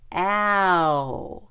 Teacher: And finally, there's ow, as in cow. Americans tend to start with the short A. So it is ca, a, with that bent, a little bit bent tongue, cow, cow.